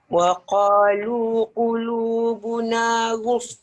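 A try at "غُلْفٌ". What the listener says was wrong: Ghul. Dia sikit sangat lam tu. Dia tak sempurna. Ghulf. Ghul. Dia kena senyum dulu. Ghul. Ghul.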